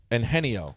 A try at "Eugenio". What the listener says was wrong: Eugenio? Not in there. You put an N in the first syllable. And Henny, there's not an N